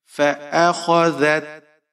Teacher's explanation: خا موٹا پڑھیں گے، ذال کو نرمی سے پڑھنا ہے